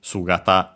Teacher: Sugata is accent on the first syllable, so be careful.